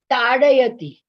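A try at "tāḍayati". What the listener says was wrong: Yeah, very good.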